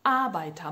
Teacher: Agora é hora de falar o ER como som de A